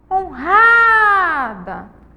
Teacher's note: O ra é a sílaba mais forte e tônica da palavra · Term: sílaba tônica